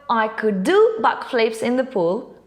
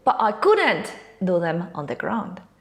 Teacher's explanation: when the sentence is positive the main verb gets the stress when the sentence is negative now it'll be couldn't the one getting the stress